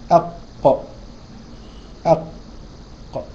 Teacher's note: خرجت من اقصى اللسان مع الايه مع اقصى الحلق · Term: القاف